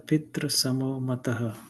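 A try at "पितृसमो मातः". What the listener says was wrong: Tru is not ta, r, u. It is not that. So this is the ta with rkara swaram with the rukara vowel. So it should be as one consonant only. Pidra.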